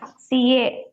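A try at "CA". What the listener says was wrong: Very good.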